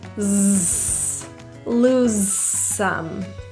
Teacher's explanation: We will say it just once and link them together. The voicing kind of turns off slowly.